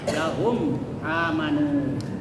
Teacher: Cara membacanya, mim disuarakan dengan terang, ya, dan jelas di bibir serta mulut tertutup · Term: izhar syafawi